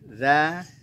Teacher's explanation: zalnya ujung lidah kita keluar sedikit dari batas gigi